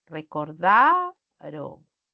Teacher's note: Al pronunciar recordaron, yo tengo también la fuerza de voz en da